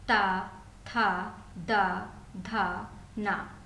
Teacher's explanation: ता वर्ग अर्थात दंत यानी कि दांतों से निकलने वाले वर्ण